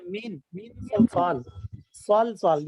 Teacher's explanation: جیسے مین صلصال, کیوں نہیں جاتی ہے, دیکھیں مین صلصال, یہ صاد ہے, تو مین کو ادا کریں, ہلکا سا لگایا نون کے مخرج پہ زبان کے کنارے کو, ساتھ گنا بھی ادا کریں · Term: اخفاء